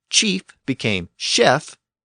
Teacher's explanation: that initial CH sound continued to evolve within the Parisian dialect. It eventually shifted to an SH sound.